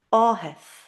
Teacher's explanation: TH sounds like h consistently, always. It's an aspirant, breathy h sound.